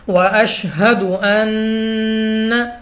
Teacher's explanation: نون مشدد غنہ کر کے پڑھیں گے